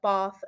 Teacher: the way i pronounce my a's is like an ar like an ar sound so i say like bath and when i say banana i